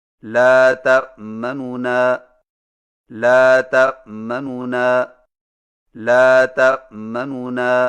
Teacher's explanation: دو نونوں سے پڑھیں لیکن پہلے نون کی پیش کو جلدی سے پڑھیں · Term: اختلاس